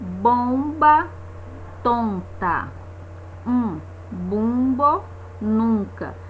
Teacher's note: um bumbo nunca Então esse é se eu sou na vogal mas a consoante m ou a consoante n é como se essa letra não existisse e eu tivesse ali uma vogal nasal